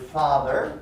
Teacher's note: number three is the vowel op in the word father right a low back vowel